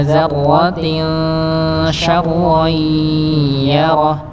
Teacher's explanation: Bukan wa may ya'mal tapi wa may ya'mal mithqala dzarratin syarran yarah, dzarratin seperti dia masuk pada hukum ikhfa tanwin kasrah tanwin bertemu dengan shin dibaca samar